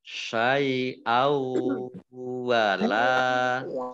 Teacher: fathah bertemu dengan huruf alif, bacaan mat tobi'i panjang 2 harokat.